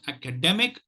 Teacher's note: the primary stress is on the third syllable and the secondary system is on the first syllable please keep